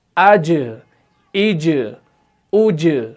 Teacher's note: जब आप जीम की अदायगी करते हैं तो आप जुबान के बीच वाले हिस्से को ऊपर के तालू के साथ बिल्कुल चिपकाते हैं पहले, उसके बाद ही जीम निकलता है।